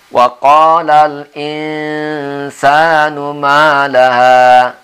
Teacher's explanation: N-nya jangan ditekan betul giginya cara membacanya. Sedikit dibuka supaya kedengaran N-nya itu samar-samar. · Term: ikhfa